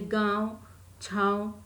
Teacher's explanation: ऐसे स्वरों का उच्चारण नाक और मुंह से होता है। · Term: अनुनासिक